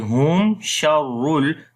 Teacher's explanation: After the meme sakin, the next is sheen. We make izhar shafawi